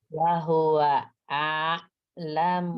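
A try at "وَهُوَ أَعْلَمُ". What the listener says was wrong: Masih kepanjangan. Wahua a'lamu. Ainnya lebih tawasud. A'lamu. Jangan ngerem mendadak. Kan ain kan bukan hamzah. Jangan jadi hamzah ketemu hamzah. Tadi udah ain ketemu ain, sekarang hamzah ketemu hamzah. Hamzahnya ketemu ain.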